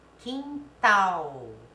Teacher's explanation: sofá a mais forte é o fá é última sílaba quintal a mais forte é tal é a última sílaba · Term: oxítonas, oxítona